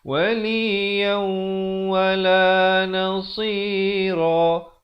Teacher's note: Asalnya waliyan. Tapi bila datang waw masuk beserta dengung 2 harakat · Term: idgham biqunna